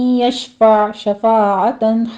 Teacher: आगे आइन को वस्ते हलक में ले जाके स्टॉप कर देंगे।